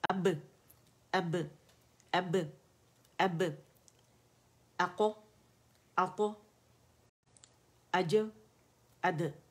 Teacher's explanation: اس میں شدت آواز اس کے مخرج پہ جا کے قوت سے اور سختی کے ساتھ رک جاتی ہے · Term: قلقلہ